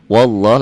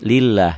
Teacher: lafad Allahnya dibaca tebal tafkhim taglid Kenapa tafhim tebal karena sebelum lafad Allah baris di atas